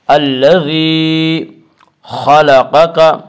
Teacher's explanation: خا کو بھی پر پڑھا جائے گا اور قاف کو بھی پر پڑھا جائے گا۔ خا اور قاف حروف مستعلیہ میں سے ہیں۔